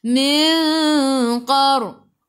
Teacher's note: Sebelum ra ada baris atas, kena baca tebal, tafkhim nama dia. Qaqiqu tebal, isti'la huruf qaf.